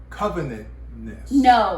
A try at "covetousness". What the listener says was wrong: No, covenant is not. No. Because it's covet. Covetedness.